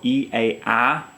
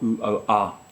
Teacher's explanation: E, A, A is wide to open, U, O, A is narrow to open